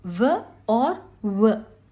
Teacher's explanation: It is dantavya oshtavya cha, both a dental and a labial sound since both teeth and lips are engaged